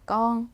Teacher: 원래 발음은 건이죠. 근데 남쪽 사람들 껑이라고 해요.